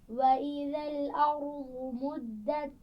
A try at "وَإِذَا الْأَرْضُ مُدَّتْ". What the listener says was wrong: را پر قلقلہ نہیں ہونا چاہیے، واد کے مخرج کا خیال رکھیے۔ وَإِذَا الْأَرْضُ۔